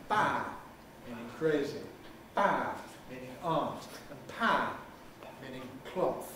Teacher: the first one is fully voiced the second one is voiceless and unaspirated and the third one is voiceless and aspirated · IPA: b p pʰ